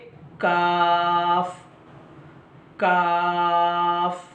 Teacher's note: जबान की जड़ नहीं है थोड़ा सा आगे का हिस्सा ऊपर के तालु से लगा देंगे तो काफी अदा होगा